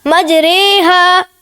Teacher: زبر کو زیر کی طرف اور الف کو یا کی طرف مائل کر کے پڑھنے کو امالہ کہتے ہیں۔ امالہ کی را کو اردو کے لفظ قطرے کی را کی طرح پڑھیں، یعنی را نہیں بلکہ رے پڑھیں۔